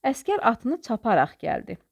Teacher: Burda araq ərək feli bağlamadır. Ona görə vurğusu birinci hecasın üzərindədir